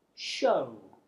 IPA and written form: ʆəʊ (Show)